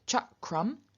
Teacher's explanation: to walk we get cha crum what's happening here is that only the k is reduplicated not the r and k is a velar velars are reduplicated as their palatal